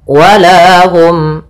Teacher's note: Hum itu ada izhar syafawi, itu dibaca dengan jelas suara mimnya